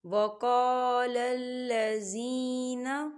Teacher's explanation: وقال الذین، دیکھیں یا ساکن ہے، یا ساکن سے پہلے زیر ہے، یہاں پر یا مدہ ہو رہا ہے تو اسے ہم دو حرکت کے برابر کھینچ کے پڑھیں گے